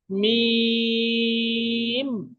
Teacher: অনেকে বলে থাকি, মিম মিম, মিমের জায়গা মিম বলে ওঠি, বা মিন, শেষে গিয়ে দন্তন্য বলে থাকি, কিন্তু না, মিম শুধু ম উচ্চারণ হবে, মিম। ঠোঁট ছাড়বে, আবার জুড়ে যাবে, মিম। এরও নিচে তিন দেওয়া আছে, আমাকে এখানেও 3 আলিফ পরিমাণ টান দিয়ে পড়তে হবে।